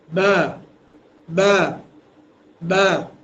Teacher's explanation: দুই ঠুটের ভেজা অংশ থেকে বা ঠুট কিন্তু বেশি ফাঁকা হবে না এক কলম এইযে কলম আপনি যখন একা প্র্যাকটিস করবেন এই কলম নিবেন বা যখন বা বলছেন তখন টুটের মাঝখানে ফাঁকা যে জায়গাটা ঠিক কলমের মত থাকবে কলম কিংবা একটা আঙ্গুল পরিমাণ থাকবে বা বা এরকম ভাবে প্র্যাকটিস করতে হবে।